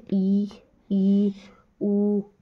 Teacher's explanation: संवृत यानी कि क्लोज जिसमें मुख द्वार लगभग क्या होता है बंद होता है